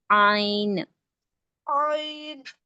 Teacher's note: عین کو حلق سے پڑھیں گے اور تھوڑا کھینچ کے پڑھیں گے